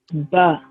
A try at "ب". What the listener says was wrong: No, not ba. Ba is a soft and long. Make it long, and as you know, the voice should exit.